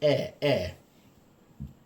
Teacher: the kind of more slightly open mid area is eh. And that's also made in the middle.